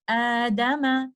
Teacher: پہلے والے حمزہ پہ چونکہ فتحہ ہے تو بعد میں آنے والے حمزہ کو ہم الف مد میں بدل کر اس طرح سے پڑھیں گے